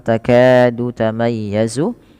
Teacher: ka dipanjangkan 2 harakat karena ia mad tabi'i